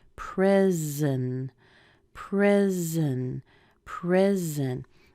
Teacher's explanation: The second syllable is unstressed. That means that vowel will be removed